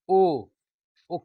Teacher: कंठ भी आ रहा है और ओठ भी हिल हिल रहा है